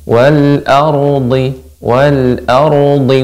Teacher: ro wal ardhi dibaca dengan tebal